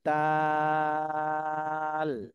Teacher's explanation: জিহ্বার আগা সামনের উপরে দুই দাঁতের গোড়ার সাথে লাগিয়ে দাল উচ্চারণ হয়